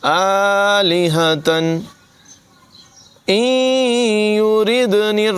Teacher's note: आलिहतन इन युरिदनिर्रहमानु, नून साकिन के बाद या हुरूफ़ यरमालून में से है, यहाँ पर इदगाम होगा, गुन्ना करेंगे और नून को या से मिला देंगे। इन युरिद नहीं पढ़ेंगे बल्कि इन युरिद, यानी नून और या की आवाज़ मिक्स हो जाएगी।